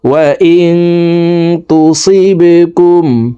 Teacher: নাকের ভিতরে লুকাইয়া গুন্নার সহিত পড়ব